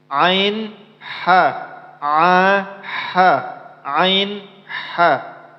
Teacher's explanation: Ain itu ialah tenggorokan bagian tengah. Dia pasangannya sama huruf ha, ha tipis.